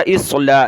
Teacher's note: حمزہ کو صاد کے ساتھ ملایا، اصلاح، صاد کو موٹا کیا،